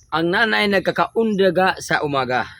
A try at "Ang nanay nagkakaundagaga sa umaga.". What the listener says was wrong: Dili, ang nanay nagkakaundagaga. Doble na, nagkakaundagaga sa umaga.